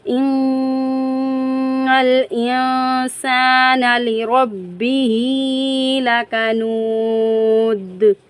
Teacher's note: آیت دال کو ہم ساکن کرتے ہوئے جنبش دے کر پڑھیں گے کیونکہ دال حروف قلقلہ میں سے ہیں.